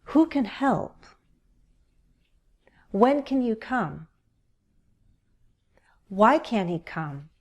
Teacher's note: When you ask questions for information, use falling intonation. Listen to my voice go down.